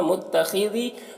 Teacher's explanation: خا کو پر پڑھیں گے، حروف مستعلیہ میں سے ہے، ذال کو باریک پڑھیں گے